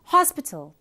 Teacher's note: we show it like this with this last syllable unstressed hospital this word has three syllables where the first syllable is stressed